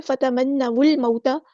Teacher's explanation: پڑھ رہے ہیں تو حمزۃ الوصل ہمارا ڈراپ ہو جائے گا۔ لام یہاں پر لام قمری ہے، اس کو ظاہر کریں گے۔ · جبکہ دوسرا جو الف ہے یہ حمزۃ الوصل ہے، مطلب اگر ہم واو کو لام کے ساتھ ملاتے ہیں تو درمیان والا الف ڈراپ ہو جائے گا